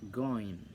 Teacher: Now, velar. The active articulator is the tongue body and the passive articulator is the soft palate.